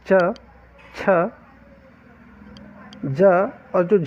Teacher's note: देखिए, स्पर्शी व्यंजन तो है ही, ये जो जितने 5 वर्ग हैं हमारे पास ये स्पर्शी भी है, परंतु संघर्षी, संघर्षी का अर्थ होता है संघर्ष होना या घर्षण होना, घर्षण या कंपन होना व्यंजन के उच्चारण से। तो यहाँ पर च, छ, ज और जो झ है इनको स्पर्श संघर्षी व्यंजन के अंतर्गत रखा गया है।